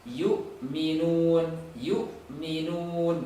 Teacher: ada waw mati, sebelumnya dhammah, majukan bibirnya